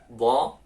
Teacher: Do itu ingat di lidah, sisi lidahnya itu bertemu dengan geraham. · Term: huruf do